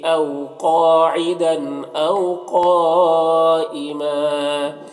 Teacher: قاف حروف مستعلیہ میں سے پر پڑھیں گے اور یہ جو مد ہے مد متصل ہے، سے 3 سے 4 الف کے برابر کھینچ کر پڑھیں گے. یہاں پر 2 زبر ہے، وقف کی صورت میں ایک زبر کے ساتھ الف پڑھیں گے